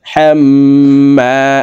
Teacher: এই জবরওয়ালা হাটি তাসদিদওয়ালা মিমের সাথে 3 সেকেন্ড পরিমাণ গুন্নাহ করে পড়ব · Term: ওয়াজিব গুন্না